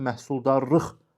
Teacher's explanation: Məhsuldarlıq sözündə isə məhsuldarlıq, baxın, sonuncu saytın üzərindədir.